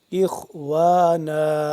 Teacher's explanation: خوا کا موٹا کر کے پڑھیں گے ، واو الف زبر وا، نون دو زبر نن، اخوانا، اور